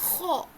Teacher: اس کے بعد ہے خو. خو حلق کے فرسٹ والے حصے سے خو، ہونٹوں کو گول کر کے